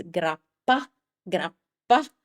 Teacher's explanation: he does articulate the double consonants correctly. How does he do that? By keeping the consonant for longer.